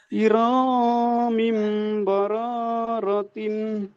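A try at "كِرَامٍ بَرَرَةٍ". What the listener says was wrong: টান হয়ে যাচ্ছে, এগুলি সব হারাকাত, টান হবে না। কিরামিম বারারাতিন।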